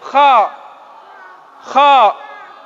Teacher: Harus ada suara kayak mau ngeluarin dahak. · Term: huruf kha